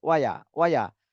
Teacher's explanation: ওয়াওতে টান দেওয়া যাবে না, ইয়াতেও টান দেওয়া যাবে না, দুইটাই হরকত